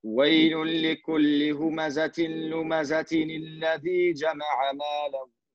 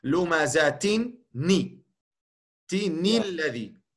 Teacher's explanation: dat is geen echte hamza die je duidelijk moet uitspreken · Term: hamza to wassel